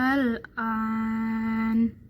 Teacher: Kemudian yang kedua adalah mad lazim. Mad lazim mukhafal kalimi, panjangnya 6 harokat